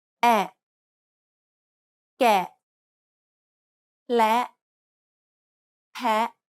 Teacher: it's a short, open, E-like sound, similar to the sound the A makes in the word at.